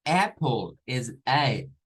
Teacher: es el sonido corto, es una mezcla entre una A y una E. Nosotros acostumbraríamos a solo hacer la primera parte, hacer la A, apple, diríamos nosotros, pero es apple, apple, es A.